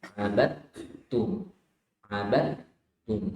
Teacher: Jadi tidak ke huruf dal dulu, ya. Di huruf dalnya langsung dimasukkan ke huruf ta. Di cara bacanya langsung saja seperti ta tasydid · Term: dileburkan ke huruf ta